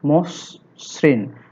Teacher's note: শব্দের আদ্য অ এর পরে রিকার যুক্ত ব্যঞ্জন বর্ণ থাকলে সে অ এর উচ্চারণ সাধারণত ওকারের মতো হয়। এই অটা ও তে রূপান্তরিত হওয়াকে সংবৃত নিয়ম বলা হয়।